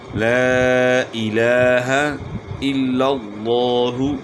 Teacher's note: تو ان کے ہجے اس طرح کریں گے: لام الف مد زبر لا، حمزہ زیر ای، لا ای لام کھڑا زبر لا لا الہ زبر ہا لا الہ حمزہ لام زیر ال لام لام زبر لل الل لام کھڑا زبر لا الل الا اللہ پیش ہو الا اللہ. یہاں جو ہے لفظ اللہ کا لام جو ہے اس سے پہلے والے حرف کے اوپر زبر ہے، اس لیے لفظ اللہ کا لام موٹا ہوگا